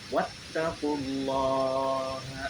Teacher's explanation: Hukum tajwid di atas adalah tahkim, ya, atau tebal. Tahkim ini terjadi apabila lafaz jalalah didahului oleh fathah atau dhammah.